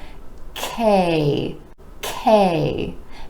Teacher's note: the K consonant sound where the back of the tongue is rising up towards the palate